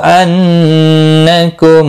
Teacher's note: नून मुशद्दद पर गुन्ना होगा